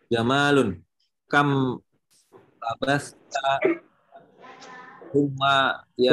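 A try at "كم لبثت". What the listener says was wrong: labisa, bukan labasa. Labisa. Kam labista.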